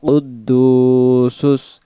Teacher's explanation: কুদ্দুসুস দালের পেশটাকে এক আলিফ টান দেব